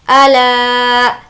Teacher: ला को खींचेंगे, अलिफ मद्दा है